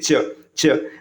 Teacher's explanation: जैसे ही च बोलेंगे ना आपका जीभ क्या होगा ऊपर तालू को स्पर्श करेगा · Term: तालव्य व्यंजन